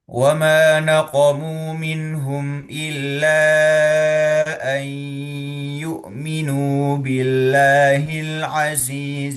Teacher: Nun sukun bertemu dengan huruf ya hukumnya adalah idgham bighunah. Artinya kita perlu tahan lebih lama gitu ya.